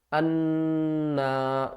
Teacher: نون مشدد ہے تو اس کو ہم گھننے کے ساتھ پڑھیں گے۔ انا، یہ دیکھیں یہ جو کلر ہے نا یہ گھننے کی علامت ہے، نون مشدد اور میم مشدد، اس پر گھننا کیا جاتا ہے۔